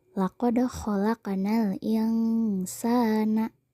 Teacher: kata sa itu termasuk Mad thi'i fathah menghadapi Alif dibaca panjang dua harakat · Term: mad tobi'i